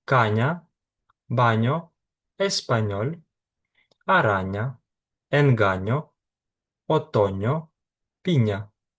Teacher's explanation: Тут головне не додавати ніякого звуку й. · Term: м'яке нь